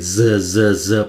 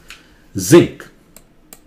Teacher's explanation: जीभ को दांत के पास लाइए, गले से आवाज निकले